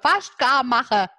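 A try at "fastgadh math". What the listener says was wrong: Tatsächlich ist es viel, viel einfacher. Das ma war total richtig. Und das andere heißt fest-ga. Fest-ga-mach.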